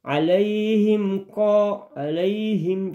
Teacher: tidak boleh dengung. Dia jelas ya, langsung masuk